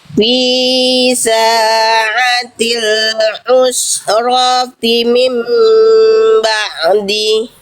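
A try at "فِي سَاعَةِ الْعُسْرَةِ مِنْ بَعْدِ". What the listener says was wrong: Nah, di sini kena lagi. Oke, berarti bunda belum konsisten. Apa? Ain sukun. Ain sukun kesalahan bunda, kesalahan kecil. Ain sukun bunda lihat poin kedua. Menambahkan suara tambahan berupa pantulan. Cuman ketika diulang dari sini balik lagi dia. fi sa'atil usrati min ba'di.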